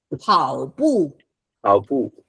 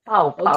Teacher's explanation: If you don't do the 跑步 aspiration, you are hugging someone.